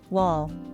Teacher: la l oscura que suena como cuando viene después de la vocal en una sílaba